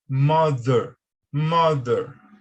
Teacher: essa pronúncia do TH, ela é mais firme, parecendo com o D